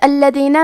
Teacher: کلمت الذین میں حرف اللام پہ تشدید ہے تو ہم 2 حرف کے برابر لام کو پڑھیں گے کیونکہ تشدید کی اصلیت 2 حرف ہے.